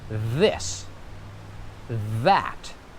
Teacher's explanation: I'm sticking out my tongue, I'm blowing air, and I'm doing a little vibration. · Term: voiced TH